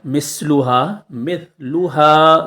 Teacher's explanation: ناٹ مثلها مثلها سیٹی نہیں آنا چاہیے سا ادا کرتے ٹائم سیٹی نہیں آئے گی بلکہ سین ادا کرتے ٹائم سیٹی آنا ضروری ہے